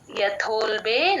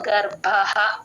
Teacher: ఇక్కడ దోల్బే లో మహాప్రాణం బ కి లేదు గర్భ కి మహాప్రాణం ఉంది